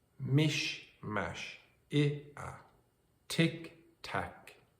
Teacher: the first word has a higher vowel and the second word has a lower vowel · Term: ablaut reduplication